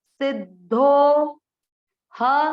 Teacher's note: ये है अवग्रह, अवग्रह के कारण धो को लंबा खींचेंगे